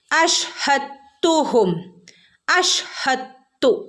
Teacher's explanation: ദാലിനെ തയിലേക്ക് ഇദ്ഗാം ചെയ്ത് കൂട്ടിച്ചേർത്ത് ഓതണം കേട്ടോ. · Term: ഇദ്ഗാം മുതഖാരിബൈൻ